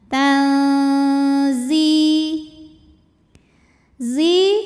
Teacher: Nun disamarkan ke Zai disertai bunyi dengungan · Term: ikhfa Hakiki